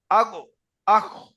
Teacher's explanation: 3 নম্বর মাখরাজ হলো গলার শেষ ভাগ থেকে উচ্চারণ হয়, গইন খ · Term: গইন খর মাখরাজ